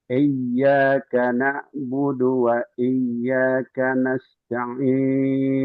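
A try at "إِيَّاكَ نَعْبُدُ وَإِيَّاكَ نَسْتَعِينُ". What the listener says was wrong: Ini kurang mengalir ainnya.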